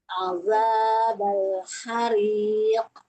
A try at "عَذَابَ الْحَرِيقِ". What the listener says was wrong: Tidak harik, tapi hariq.